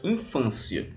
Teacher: é uma paroxítona, ou seja, a penúltima sílaba é a mais forte e ela termina em ditongo crescente